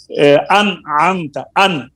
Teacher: अन आमता में ना गुन्ना किया है, ना ये क़लाब किया है, ना इसमें इदगाम किया है, उसको जाहिर कर दिया है। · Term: इजहार